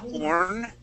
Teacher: that B was sort of hidden, so it sounded more like you said orn, because that B was so quiet